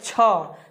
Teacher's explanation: ह ऐसे ह बोलेंगे तो क्या हो जाएगा, ये डायरेक्ट ह कंठ से आ रहा है, तो ये क्या हो जाएगा, तो कंठ हो जाएगा, कंठ। छ, अगर छ बोलते हैं, छ, तो ये तालू में हमारे टच करता है, ठीक है। तो ये हो जाएगा इसका उच्चारण स्थान तालु हो जाएगा इसका उच्चारण स्थान।